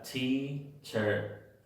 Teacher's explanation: en la palabra teacher, en la segunda sílaba, en esa E, está la schwa también.